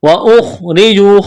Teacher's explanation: ہاجروا الف مدہ ہے، واو مدہ ہے، را کو موٹا کرنا ہے، پیش ہے. واخرجوا خا کو موٹا کرنا ہے، را کو باریک کرنا ہے، را کے نیچے زیر ہے، واو مدہ ہے، ایک الف کے برابر کھینچنا ہے.